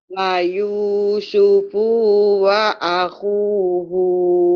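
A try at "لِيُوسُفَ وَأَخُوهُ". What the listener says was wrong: Kenapa panjang ya Ibu? Hu-nya panjang kenapa ya? Kenapa panjang? Pu sama hu-nya, ujung-ujungnya. Kan pendek.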